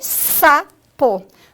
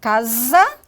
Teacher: O S, ele pode corresponder ao fonema sa, mas ele pode também corresponder ao fonema za, como em casa